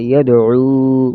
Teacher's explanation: یا دال زبر ید عین وپیش عو یدعو وقف یدعو. عین کی آواز گلے سے